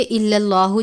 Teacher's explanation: الا اللہ، لفظ اللہ کے لام سے پہلے زبر ہے، یعنی الا، اور اس کے بعد اس کو ملا کر پڑھیں گے الا اللہ، جب پڑھیں گے تو لفظ اللہ کے لام سے پہلے زبر ہے، اس لیے اس لام کو پر پڑھیں گے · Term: تفخیم